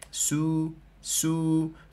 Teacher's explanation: لا بد من بيان ترقيق السين بضم الشفتين ضما تاما